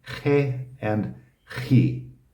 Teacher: It's not like a soft H. It's like I'm clearing my throat.